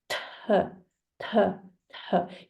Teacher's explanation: You will feel the sharp air touching your hand